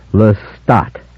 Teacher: primary stress on the second syllable sounding the final t distinctly